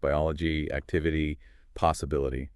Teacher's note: You're stressing the O in biology, the I in activity, and the first I in possibility.